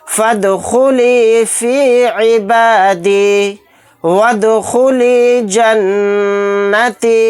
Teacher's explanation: दाल साकिन है, यहाँ पर हम क़लक़ला करके पढ़ेंगे